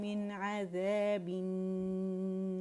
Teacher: زبان کی جڑ اٹھا لیں گے تو یہ خود بخود را جو ہے یہ موٹا پڑا جائے گا ، ٹھیک ہے، روانی میں ناری اور وقف میں نار، ٹھیک